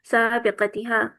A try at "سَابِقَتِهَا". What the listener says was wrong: سابق کے نیچے بھی زیر آئے گی. ता के नीचे जेर आएगी।